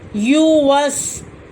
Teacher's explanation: گا، الذی، یا پیش یو، واو زبر سین وس، یو وس، یا پیش یو کھینچا نہیں جائے گا، واو کی زبر سین کی جزم سے ملے گی